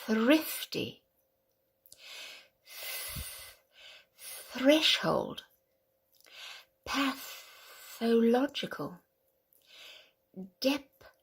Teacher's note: Now these are the unvoiced sounds of the TH, all right? So we don't use the larynx. It's just the air coming out